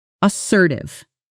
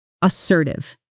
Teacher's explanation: Let's pronounce it as sir tithe. The stress falls on the second syllable and that sir part rhymes with her.